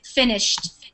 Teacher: It's more of a D sound, but finished, it sounds like a T at the end. Finished. And walked, it's almost like it sounds like walked, like that with a T at the end.